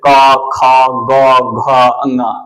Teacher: क वर्ग का जो स्पर्श स्थान होगा ये कंठ से होता है। कंठ से मतलब यहां पे जोर आपको ज्यादा देना पड़ेगा कंठ पे जैसे क ख ग घ इस तरह से कंठ पे जोर पड़ना चाहिए।